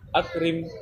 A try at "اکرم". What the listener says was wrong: اکرم. یہاں را پر نہیں نکلے گا کیونکہ یہاں زیر ہے اس لیے اکرم اکرم. یہاں را نہیں نکلے گا اکرم اکرم نہیں اکرم نہیں اکرم. را کے یہاں باریک نکلی آواز.